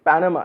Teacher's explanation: The word Panama has accent on the first syllable